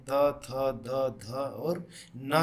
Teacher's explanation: दांत की सहायता से ऊपरी दांत के निकट से जो करते हैं त, थ, द, ध और ना का हम उच्चारण करते हैं